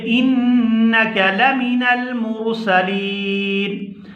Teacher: جب ہم نون کے اوپر وقف کریں گے تو نون کے اوپر سے زبر جو ہے وہ ختم کر دیں گے اور یہاں اس کو کر دیں گے ساکن